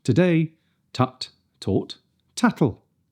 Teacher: Let the air build up and then release it over the tip of the tongue. Nice and crisp with no splashy S at the end. Not t, t, t, t, t, t.